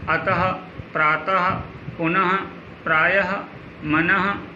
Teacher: इसका उच्चारण ह के रूप में, अंत में ह के रूप में होता है। जैसे आप देख सकते हो, अतः, प्रातः, पुनः, प्रायः, मनः, स्थिति, संभवतः इत्यादि। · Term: विसर्ग